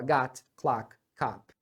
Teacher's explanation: Todo mundo fala everybody, com som de A, bem aberto. É a mesma coisa nas outras, tá?